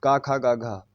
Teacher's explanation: तो ये आपको पता है का वर्ग जो है वो कंठ से है